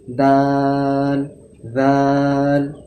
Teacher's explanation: দাল আর দাল এই দুটো হচ্ছে বারিক অক্ষর। অর্থাৎ মুখটাকে পাতলা করে বলতে হবে। দাল দাল এভাবে দাল দাল এমনি করে মুখটা বড় করে বলা যাবে না।